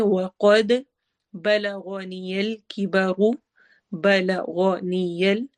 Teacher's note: لمبا نہیں کرنا کسی کو بھی، غائن کو موٹا کرنا ہے · قد قاف بھی موٹا ہے، اور دال پر ہم قلقلہ کریں گے، ایکو ساؤنڈ ہوگی